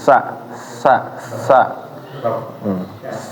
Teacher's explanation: Sa suaranya tajam jangan sya atau sa kurang kurang tajam tapi ditajamin jadi sin sa sa.